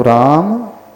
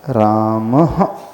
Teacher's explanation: Slightly ह का उच्चारण होगा, यानी जैसे इको साउंड होता है तो जो ध्वनि टकरा करके लौट करके आती है, प्रतिध्वनि जो हम सुनते हैं, उसी के लिए विसर्ग की विधि बताई है।